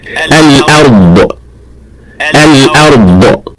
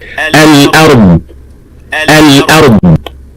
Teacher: Now that last bit of the sound is the qalqala or the releasing of air, which is not supposed to happen.